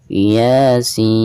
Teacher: ketika kita membaca ya nya itu dibaca Dua harokat dan ketika membaca seinnya itu dipanjangkan 6 harokat Iya Sin seperti